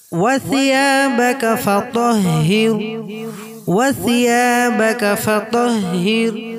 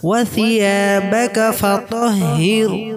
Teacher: ওয়াসিয়া এইটায় এক আলিফ পরিমাণ টান হবে, মধ্যে আসলি আছে।